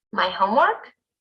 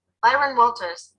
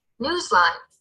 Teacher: we do the rising intonation in expressions for clarification